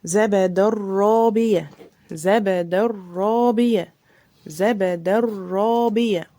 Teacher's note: برضو الراء لازم تبقى مشددة